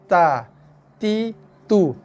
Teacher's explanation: Kita boleh rasa sikit hembusan nafas pada tapak tangan.